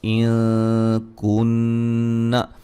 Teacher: یہ کئی لوگ اس کو پڑھ دیتے ہیں وَإِن كُنَّ، نہیں، وہ نون مشدد کے غنے کی طرح اس کو نہیں پڑھنا بلکہ ناک میں آواز کو چھپانا ہے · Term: نون ساکن کا اخفا